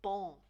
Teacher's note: we don't want that G sound at the end, but we want that nice nasal sound